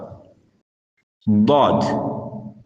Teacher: நாவின் இடப்பக்க ஓரம் மேல் கடவாய் பற்களின் ஈறு, அதாவது பற்கள் ஊண்டியிருக்கும் சதைகளில் இலேசாக படும்போது வெளியாகும்.